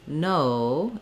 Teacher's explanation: english many languages will have an o sound that's one sound in english ours glides o from a rounded o to a more closed uh sound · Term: diphthong o